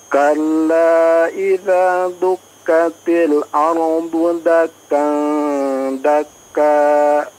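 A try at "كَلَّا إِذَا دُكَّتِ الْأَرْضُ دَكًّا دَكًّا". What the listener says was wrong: Tayyib. Ya, Masya Allah, sudah cukup baik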